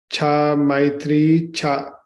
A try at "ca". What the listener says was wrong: Cha. Cha. Make sure, you're working so hard to make a long A. Make sure your short ones are short. So you can say for puja and then say cha. Cha. It's shorter and it's more of an sound.